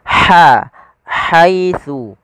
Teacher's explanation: huruf ha ini memiliki sifat hamas. Makhrajnya dari tengah tenggorokan kita